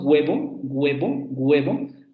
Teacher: se acerca mucho a una g pero sin llegar a una g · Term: aproximante